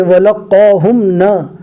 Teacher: جزم والے میم کو ظاہر کر کے پڑھیں گے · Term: اظہار